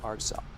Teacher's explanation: It's almost like he's got a little pause in that first syllable. Almost like it's Marcel toying instead of Marcel.